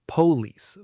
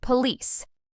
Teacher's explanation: native speakers stress the second part, police.